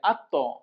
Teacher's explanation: হামজা জবর আ, আ লাগবে তর সাথে, আত্ত। ত সাকিনে কলকলা, প্রতিধ্বনি সৃষ্টি করে কলকলা, শাপলা ফুল যেখানে, কলকলা করতে হবে সেখানে।